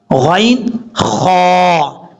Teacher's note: اس کے بعد ہیں 2 حروف اور ہم نے 6 پورے کرنے حروف حلقی میں سے. آخری حروف جو ہے وہ حلق کا جو منہ کی طرف حصہ ہے وہاں سے ادا ہوتے ہیں، یعنی غین اور خا، یعنی منہ کا جو خالی حصہ ہے وہاں سے یہ حروف ادا ہوتے ہیں 2.